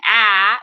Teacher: ah is a front vowel because the resonance and the vibration you can see ah is happening on my tongue at the front of the mouth